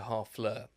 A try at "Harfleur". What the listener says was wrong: Harfleur. They don't pronounce the H. Harfleur. They don't pronounce the H in French.